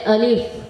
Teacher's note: الف کا مخرج منہ کے خالی حصے سے ادا ہوتا ہے